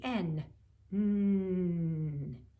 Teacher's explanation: if you put your tongue the tip of the tongue up against the alveolar ridge then you get the n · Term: nasal